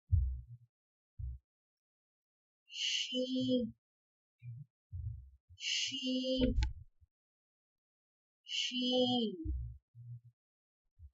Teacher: زبان کا درمیانی حصہ جب تالو کے درمیانی حصے سے لگے تو شین ادا ہوتا ہے